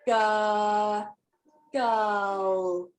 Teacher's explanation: our english language however notice that i don't say girl okay i don't release it like a light l which you would find before a vowel in words like light lucky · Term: dark l